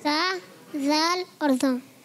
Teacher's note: जबान का सिरा और ऊपर के दांतों के अंदरूनी किनारे से सा अदा होता है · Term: हुरूफ़े लिसविया